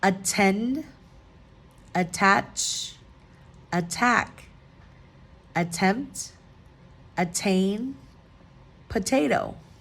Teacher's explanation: the um vowel after the t is accentuated or accented um the T remains a t sound and not the D sound